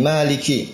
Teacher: Maliki, ki kaf keluar angin. Maliki. Ya, dia memiliki sifat hamas, termasuk dari huruf hamas, keluar angin.